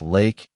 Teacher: For the L sound, put the tip of your tongue on the roof of your mouth behind your upper teeth.